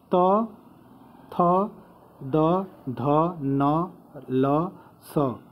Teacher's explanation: त, थ, द, ध, न, ल और सड़क वाला स का उच्चारण स्थान कहाँ से है? तो दंत है।